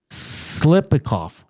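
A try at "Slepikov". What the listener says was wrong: You're trying to pronounce the T.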